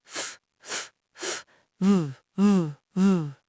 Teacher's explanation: Every unvoiced consonant usually has a voiced twin. The mouth shape's exactly the same, but the throat vibration changes. The unvoiced F becomes the voiced V.